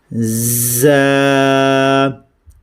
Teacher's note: دانتوں کو ملا کے اور سختی کے ساتھ ہم نے زا کو ادا کرنا ہے